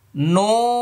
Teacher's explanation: নুনের শুরুতে ঠোঁট গোল হবে, শেষে ফাঁকা হয়ে যাবে, কারণ শুরুতে পেশ আসছে। মনে রাখতে হবে, যেখানেই পেশ থাকবে, মানে যত পেশ থাকবে তত ঠোঁট গোল হবে।